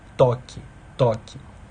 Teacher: A ponta da língua encosta nos dentes superiores. Então, o ápice lingual encosta nos dentes superiores. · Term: Linguodentais